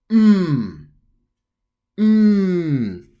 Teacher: So the N, you're only humming it.